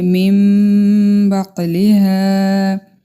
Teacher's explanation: نون ساکن کے بعد با آیا ہے، یہاں پہ ہم اقلاب کریں گے